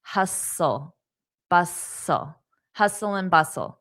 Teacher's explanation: Now, notice the T is silent. Hustle, bustle, hustle and bustle, and the and is pronounced as hustle and bustle, hustle, bustle, hustle and bustle.